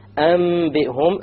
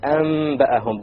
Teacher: You convert the noon to the meme with a ghunna. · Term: iqlab